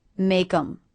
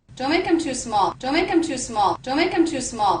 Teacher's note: Because in this pronunciation the word them begins with a vowel, and the word before, make, ends with a K, I'm going to make sure that those two words link and feel like one unit. Make 'em, rather than two separate words.